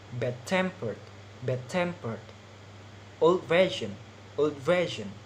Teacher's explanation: the stress is on the second part